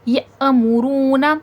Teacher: یأمرون، حمزہ پہ جزم ہے، حمزہ پہ جب بھی جزم ہوگا تھوڑا جھٹکا دیا جاتا ہے